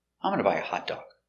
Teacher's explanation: intonation goes down is a positive statement